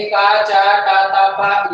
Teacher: स्वर तंत्रियों में कंपन नहीं होता है तो ये कहलाते हैं हमारे अघोष वर्ण